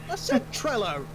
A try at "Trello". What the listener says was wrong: It sounded like you were saying Trollo. Trololololololol.